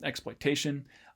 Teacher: we have sort of more stress on the last stress syllable, exploitation, which is due to what is often called a nuclear accent or pitch accent in general, which kind of forces us to stress that last syllable a bit more.